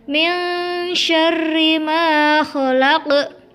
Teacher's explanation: Min syarri, di situ ada bacaan ikhfa hakiki di mana non sukun bertemu dengan huruf shin. Karena itu harus dibaca mendengung